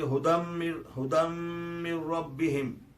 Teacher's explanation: من ربہم کا نون جو ہے وہ ختم ہو گیا اور ڈائریکٹ میم جو ہے رے سے ملا